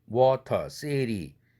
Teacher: 워터, city 이것이 모음과 모음 사이에 트 사운드가 울림도가 무성음 아닙니까? 그러면 양쪽의 모음이 유성음이니까 유성동화되어서 트도 유성음으로 바뀌는 것이죠. 그래서 자음 중에서 가장 울림도가 높은 설탄음 R 사운드 르 5도까지 올라가는 것이죠.